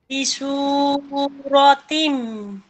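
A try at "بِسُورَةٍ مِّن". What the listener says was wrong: রতিম গুণ হবে না, মেমের বাতাস দিতেছে না।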